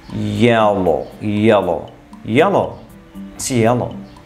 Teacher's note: the tip of tongue touches gum ridge and the air comes out on the sides of the tongue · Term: liquids